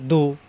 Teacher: জিব্বার গোড়ার কিনারা উপরের মারি দাঁতের গোড়ায় লাগিয়ে